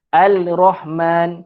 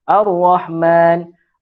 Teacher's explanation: Kita tak bunyikan huruf lam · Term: alif lam asyamsiyah